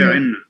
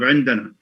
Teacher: Assimilation. Yeah, it's been assimilated to na sound. That's why we have gemination.